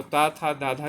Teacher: तो त, थ, धा धा किस में आएगा? दंत में आएगा।